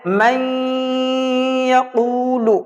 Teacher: پچھلے حرف کو اگلے حرف میں ملا دینا ہے اور نون کی آواز ناک کے اندر جائے گی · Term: ادغام ناقص